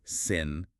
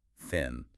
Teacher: For sin, the tongue is inside. For thin, the tongue comes between the teeth.